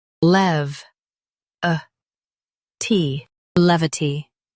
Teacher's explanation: Stress lev and keep uh tee light.